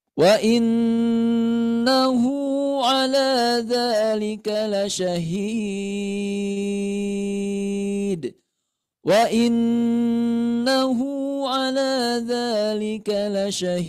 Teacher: hukumnya mad arid li sukun, boleh sampai 6 harokat ya